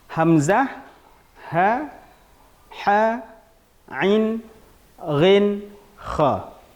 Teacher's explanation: Kenapa dinamakan dengan izhar halqi? Dikarenakan huruf-huruf yang 6 ini itu keluar dari halqi, kerongkongan.